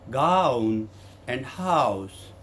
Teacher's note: is a lower back to upper back diphthong